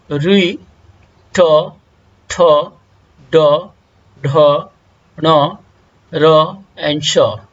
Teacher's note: इन सभी वर्णों का उच्चारण स्थान मूर्धा है, जिसे इंग्लिश में कहा जाता है सेरेब्रल।